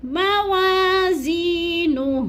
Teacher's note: یا مدہ کو 1 سے 2 الف کے برابر ہم نے لمبا کرنا ہے